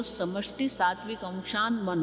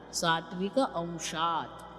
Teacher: क्यों न क्यों हो गया, वो त है अंशात, लेकिन उसके बाद म है, म नासिका है, अनुनासिका है, इसलिए वो त का भी अनुनासिका न हो गया। इसलिए साथ में बोलेंगे तो समष्टि सात्विक अंशान मन बोलेंगे, लेकिन अलग करेंगे तो क्या करना पड़ेगा, सात्विक अंशात त कहें।